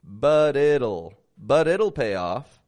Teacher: I'm linking those flap tees